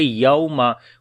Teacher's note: واو لین ہے یہاں پر، نرم پڑھیں گے